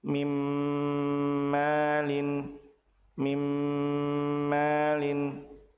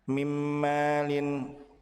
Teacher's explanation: Apabila nun sukun bertemu dengan mim, maka nun dilebur ke huruf mim dengan cara ditahan 2 harokat disertai dengan gunnah